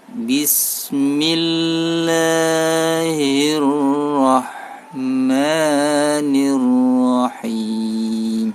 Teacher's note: Ketika mengucapkan lah, ini 2 harokat, tergantung kecepatan.